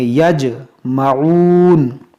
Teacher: یہاں جیم میں قلقلہ کریں گے